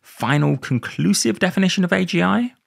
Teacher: I say with a rising tone because I don't think it is actually a conclusive definition of AGI.